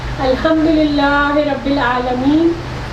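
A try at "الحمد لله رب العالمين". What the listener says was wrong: ایک منٹ، للہ کیا ہے؟ یہ کون سی حرکت ہے؟ للہ، دیکھیں اتنی زیادہ نہیں کھینچے، دیکھیں میں نے کیا کہا، آہ ای او، آہ ای او، للہ، بس للہ زیادہ نہ کھینچے، آگے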